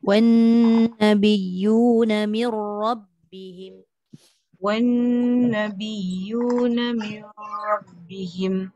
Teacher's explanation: Dekat nun tu sabdu tu dengung sikit.